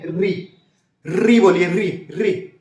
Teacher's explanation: देखिए मूर्धन्य री बोलिए, री तो जो है कंपन सा होता है जुबान में। ठीक है, और एक गड़गड़ाहट के साथ, मतलब रगड़ के साथ हवा निकलती है। ठीक है, जो वायु है या बोली है, आवाज है, वो रगड़ के साथ निकलती है, री।